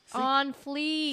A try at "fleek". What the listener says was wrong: No, fleek. You keep on saying fleet. fleek.